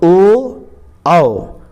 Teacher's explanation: यानी कंठ और ओष्ठ का प्रयोग होता है, उसे कंठोष्ठ वर्ण कहते हैं।